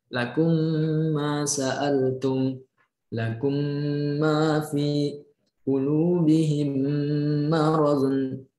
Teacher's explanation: Huruf mim ini bertemu dengan mim. Jadi ketika sama-sama mim dibacanya dengung, kurang lebih panjangnya sama, 2 harakat juga. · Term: idgham misli